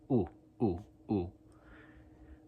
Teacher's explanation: it's like goose and it's also kind of cut off